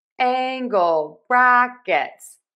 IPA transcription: ˈæŋ.ɡəl ˌbræk.ɪts